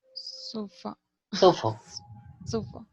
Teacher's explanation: No lo pronuncies con A, pronuncialo con schwa.